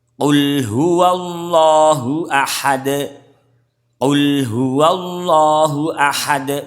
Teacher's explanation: Qalu atau kul huwallahu ahad. Kul jadi kurang kuat, kurang isti'la ya, kurang istilah, jadinya kurang tebal, makhrajnya ucul akhirnya. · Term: qaf